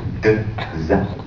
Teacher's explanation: le pizza, il y a une dentale d'attaque